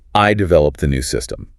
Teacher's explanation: By stressing I, you're explicitly contrasting your contribution with other people's. Maybe it signals a solo effort or a moment of individual initiative that went above and beyond the team. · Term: dynamic stress